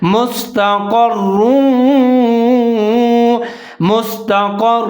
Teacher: زبر ہے، آگے را کے اوپر دو پیش اور تشدید ہے، قاف اور را دونوں ملا کے پڑھیں گے، ادغام کریں گے، مضبوطی کے ساتھ پڑھیں گے